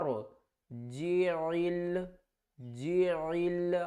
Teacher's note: عین کو ہم نے حلقے درمیان والے حصے سے ادا کرنا ہے، عین کو لام کے ساتھ ملانا ہے۔